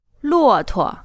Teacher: the second syllable is unstressed so we just lay the stress on the first syllable